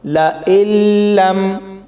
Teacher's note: حمزہ کو لام کے ساتھ ملائیں گے، سختی سے پڑھا جائے گا اور تھوڑی دیر وقف ہوگا۔